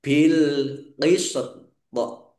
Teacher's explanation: Jadi antara sin dan tok. Nah, tok sukun itu bacaan kolkolah. Maka dipantulkan yang terakhir itu